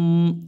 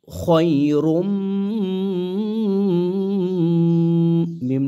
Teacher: তানভীনের পরে যদি মিম আসে মিমের উপর যদি তাদিদ থাকে ইদগামে বাগুন্না করে পড়তে হয়